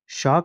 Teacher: श का उच्चारण स्थान है तो यह है तालु।